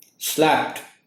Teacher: the D sound is like a T sound at the end of the word, and it is pronounced as slapped.